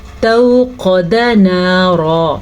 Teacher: واو ساکن سے پہلے زبر ہے تو یہ واو لین ہے، اسے نرمی سے پڑھا جاتا ہے اور بغیر کھینچے پڑھا جاتا ہے ، یعنی کہ اس کو لمبا نہیں کرتے، قا